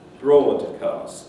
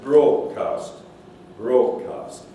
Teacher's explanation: the D is replaced by G, okay, influenced by phoneme 3, so influenced by the velar K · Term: assimilation